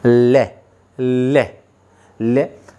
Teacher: और जो वायु है वो जीभ के किनारों को छूती हुई बाहर निकलती है। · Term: पार्श्विक व्यंजन